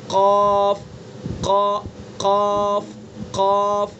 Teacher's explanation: زبان کی جڑ اور اس کے مقابل اوپر کا تالو، اس سے قاف ادا ہوتا ہے